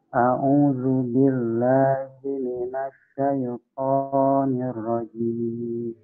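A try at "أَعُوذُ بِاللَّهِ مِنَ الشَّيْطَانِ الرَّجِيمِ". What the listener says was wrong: Untuk syaito itu cukup 2 harokat ya. Tadi terdengar di saya kepanjangan. Syaito. Po-nya 2 harokat.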